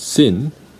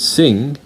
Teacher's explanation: your tongue should be touching the alveolar ridge when you pronounce the last sound of the word sin.